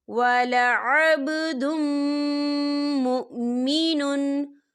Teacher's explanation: دال کے اوپر تنوین ہے اور تنوین کے بعد میم آ رہا ہے، تو یہاں پر ادغام ہوگا اور ہم اسے غنّے کے ساتھ پڑھیں گے